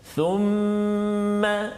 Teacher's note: Thumma wajib al-gunnah, kena dengung kat situ, dua harakat, tak boleh cepat ataupun tak boleh laju bacaan kita.